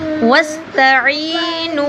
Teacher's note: عین کو لمبا کریں گے، نون کو بھی لمبا کریں گے کیونکہ آگے حروف مدہ ہے